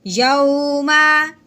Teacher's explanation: वाओ साकिन से पहले ज़बर आ जाए उसको खींचते नहीं हैं, नरमी से पढ़ते हैं। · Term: लीन